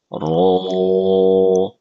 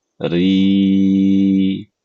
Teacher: dhammah, dan ketika sukun. Contohnya, ro, pangkal lidah dinaikkan. Ro. Sedangkan ketika kasro tipis. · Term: huruf ro